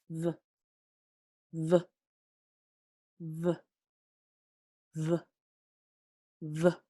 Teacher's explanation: Mira, pueden ver mis dientes cuando digo este sonido. Con los dientes de arriba y el labio de abajo, ese es donde está el contacto. Mi labio de arriba está lejos.